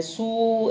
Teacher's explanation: बड़े ऊ की मात्रा है, सू ऐसे खींच के बोल रहे हैं ना हम